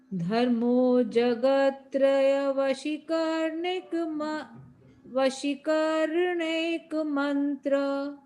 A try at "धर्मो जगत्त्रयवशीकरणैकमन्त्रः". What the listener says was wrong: हाँ इसमें अपने वशी की जो शी में बड़ी की मात्रा है ना, उसको छोटा पढ़ने से ये दिक्कत हुई। उसको बड़ा पढ़ना है। जगत त्रय, ये पूरा त्रय या तक बोलना था उसमें।